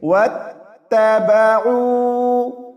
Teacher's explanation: واو کو تا سے ملائیں گے